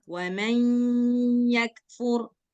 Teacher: Tahan lama, terus masukkan ke hidung suaranya. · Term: Gunnah